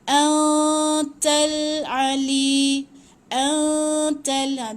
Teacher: Jangan sebut tepat pada nun. Okey, gantung sikit tapi seolah-olah nak sebut nun tapi jangan sebut tepat pada nun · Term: ikhfa